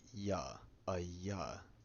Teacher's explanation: E longo, similar to cesadia, isn't present in every variant of Venet, but when it is there, it makes a voiced palatal approximant, like ya, a ya.